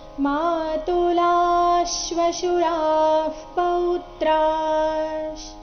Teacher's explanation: ಮಾತುಲಾಶ್ ಇಲ್ಲಿ ಲ ಆದ ನಂತರ ಇರೋ ವಿಸರ್ಗದ ಉಚ್ಚಾರಣೆ ಅರ್ಧ ಶ ರೀತಿ ಬರಬೇಕು